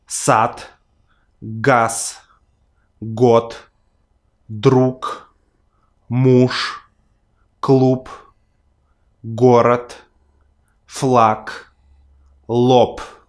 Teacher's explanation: By watching this video you're going to improve your Russian pronunciation because I'll explain you one of the most important Russian pronunciation rules, or better to say, a set of rules, which is devoicing of consonants in word final positions